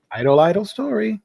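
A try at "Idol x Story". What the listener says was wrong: always pronounce the X. Idle times idle.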